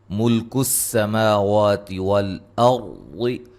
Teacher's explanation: سین کو باریک سیٹی سے